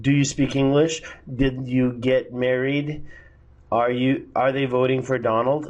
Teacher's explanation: It's all rising intonation.